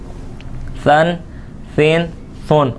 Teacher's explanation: ثا یہ بغیر سیٹی والا حرف ہے، اس کے اندر سیٹی نہیں آنی چاہیے پڑھتے وقت